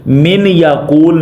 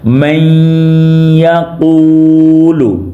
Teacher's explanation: اس کو من یقول نہیں پڑھیں گے، یا من یقول نہیں پڑھیں گے، جس کو پڑھیں گے میں، یعنی کہ جو نون ساکن ہے اس کی آواز کو یا میں بدلا جا رہا ہے، ضم کیا جا رہا ہے۔ میں یقول، اس طریقے سے پڑھنا ہے۔